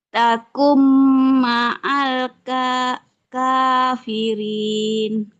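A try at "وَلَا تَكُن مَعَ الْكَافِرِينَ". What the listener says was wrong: Iya, bagus.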